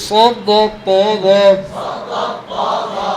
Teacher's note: ইতবাকা হরফগুলি তার মাখরাজ থেকে আদায় করার সময় জিহ্বার মধ্যখান উপরে তালুর মাঝে আওয়াজ সীমাবদ্ধ থাকবে